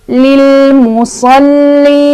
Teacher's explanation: Cara bacanya panjang boleh 2, boleh 4, boleh 6. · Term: mad arid li sukun